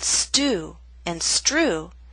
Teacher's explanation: The true T makes a puff of air, but only when T, or TR, starts a word or a stressed syllable. With ST or STR, the true T loses that strong puff of air.